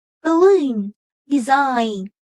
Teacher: if the second syllable contains a long power or a diphthong the stress is on the second syllable